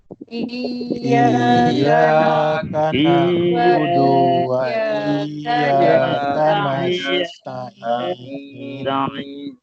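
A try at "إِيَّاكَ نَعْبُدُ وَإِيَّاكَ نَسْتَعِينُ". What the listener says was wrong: Dekat perkataan iya tu kita tekan sikit.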